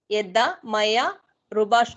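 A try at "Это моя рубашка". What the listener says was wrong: Yeda नहीं, eta. Eta.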